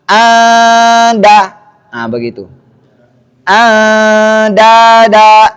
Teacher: Ikhfanya dua harakat dan tipis.